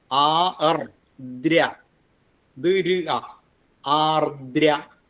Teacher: ദകാരം മൃദുവാണ്. ആർദ്ര ശക്തി വേണ്ട.